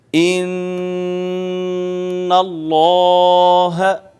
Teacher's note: دیکھیے ناظرین، نون مشدد ہے اور ہم نے یہ پڑھا ہوا ہے کہ نون مشدد اور میم مشدد جہاں بھی آئے گا وہاں پہ غنہ ہوگا، یعنی ناک میں آواز لے جا کر گنگنائیں گے